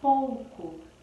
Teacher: a gente não fala o U forte, a gente fala o U fraco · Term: semivogal